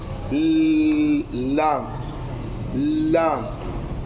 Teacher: तालु की तरफ माइल होकर लगे तो इससे लाम अदा होता है